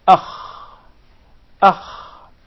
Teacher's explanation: So the articulation point is the closest part of the throat. Basically, the throat is one of the articulation points of the Arabic alphabet.